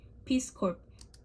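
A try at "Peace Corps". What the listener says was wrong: Now she says, remember the P is silent. Let's see if we can get rid of that.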